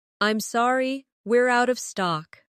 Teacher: Stress, out of stock to make it clear.